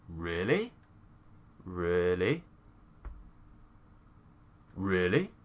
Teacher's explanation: So it's instead of being an up and down, this time it's a down, up, really.